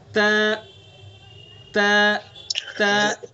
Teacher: तो ता का मखरज जबान की नोक सनाउलिया की जड़।